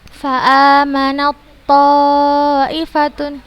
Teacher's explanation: Huruf ta sukun, setelahnya huruf to yang berharokat bertasydid, maka langsung kita masukkan ke huruf to-nya. Fa'amanat to, nah, langsung, bukan fa'amanat to, bukan seperti itu, tapi langsung kita masukkan ke huruf to-nya.